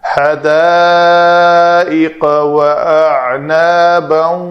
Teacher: اگر یہاں پہ تنوین کے بعد واو ہے، ملا کر پڑھنا ہے تو یہاں واو مشدد آئے گی کیونکہ ادغام ناقص ہو رہا ہے۔ حدائق واعنابا وکواعب اترابا۔